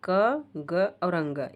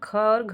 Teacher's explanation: दूसरी और चौथी महाप्राण होती हैं